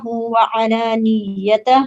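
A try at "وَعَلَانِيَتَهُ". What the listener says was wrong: وعلانیتہ میں یا کے اوپر تشدید نہیں ہے، اس لیے ہم اس کو وہ نہیں کریں گے نا ذرا، تو اس کو کلیئرلی اسموتھ پڑھیں گے. وعلانیتہ.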